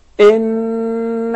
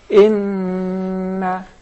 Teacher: sound of nasalization which comes from the nose